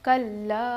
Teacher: اس کو ہم 5 الف کے برابر کھینچیں گے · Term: مد منفصل